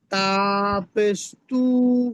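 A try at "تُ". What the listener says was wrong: এই তুটাকে টানবো না, জি না, শুধু অক্ষরটাকে টানবো, কেমন তা পেশ তু।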